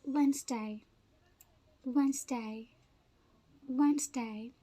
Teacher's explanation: This middle three letters are swallowed. They are really not stressed mostly.